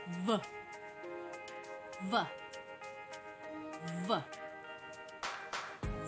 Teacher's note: Found in words like fool, enough, leave off, photo, glyph. Next is voiced fricative, made by putting your upper front teeth on your lower lips also. It sounds v, v, v.